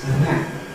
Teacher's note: After ‘and’, for example, you get just a lengthening of the [n]. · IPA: [ənˈnæt]